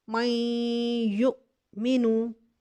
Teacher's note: नून साकिन और तनवीन के बाद अगर या आ जाए, ये देखिए नून साकिन, नून साकिन को अब देखिए ऊपर ये मुशद्दिद की हालत में है। या, नून साकिन के बाद देखिए या आ रहा है, इसको हम गुन्ने के साथ अदगाम करेंगे